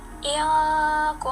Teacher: seperti ditahan, kayak dengung, seperti dengung yang ada di hidung. Tidak dibaca jelas atau izhar, melainkan dibaca dengung atau ikhfa.